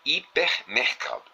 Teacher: na palavra hipermercado, a sílaba tônica está no segundo elemento, no caso mercado. E nesta palavra a sílaba tônica é K, CA.